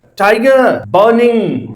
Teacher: टाई में यहां पे स्ट्रेस है, गर यहां पे अनस्ट्रेस है। अगेन टाई स्ट्रेस है, गर अनस्ट्रेस है, बर यहां पे स्ट्रेस है, निंग यहां पे अनस्ट्रेस है।